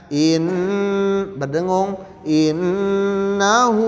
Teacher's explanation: In gunnah dibaca 2-4 ketukan. In berdengung.